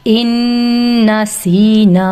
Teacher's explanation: ان یہاں پہ 2 کاؤنٹ میں دے رہی ہوں، یہ ادغام ود غنہ ہے، نون ساکن کے بعد جب نون مشدد آتا ہے تو 2 کاؤنٹ کے ساتھ اس کو پڑھتے ہیں، غنہ دے کر، ناک میں آواز ٹھہرا کر